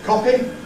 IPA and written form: ˈkɒpɪ (copy)